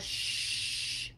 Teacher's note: the shh is a continuous sound we can keep it going as long as we can keep airflow coming out of our lungs